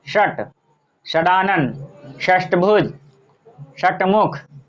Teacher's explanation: तो ये आपका मूर्धा से उच्चरित होता है, इसीलिए इसको मूर्धन्य कहा जाता है।